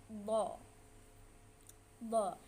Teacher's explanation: Dha tempatnya itu di tepi lidah, di tepi lidah dan geraham atas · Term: huruf dha